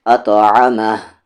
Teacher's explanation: عین کا مخرج مڈل تھروٹ ، اطعمہ، رکیں گے تو یہاں پر یہ مد ختم ہو